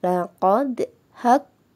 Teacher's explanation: kita baca dengan Qalqalah yang tipis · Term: Qalqalah sugro